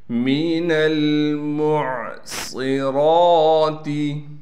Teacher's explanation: میم کو عین سے ملائیں گے، عین کو صاف کر کے نکالیں گے، صاد کو موٹا کر کے پڑھنے کے ساتھ صاد میں سٹی بھی ادا کریں گے، را پر کڑا زبر ہونے کی وجہ سے را کو کھینچیں گے بھی ایک الف کی مقدار۔